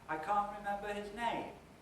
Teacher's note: So in the first utterance there, we've got 2 accents, can't and name. We've got a rhythmically stressed syllable in the middle, mem, which is not doing anything different from the pitch before it or the pitch after it, so that's not accented. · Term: accented syllables